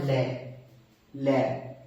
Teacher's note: जाती है और शवास वायु बगल से ल र ठीक है बगल से वायु गुजर जाती है ठीक है देन आपका पार्श्विक व्यंजन कहते हैं इसे